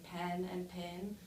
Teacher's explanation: e which is when it is produced before the nasal n so in this way the i and e sound merge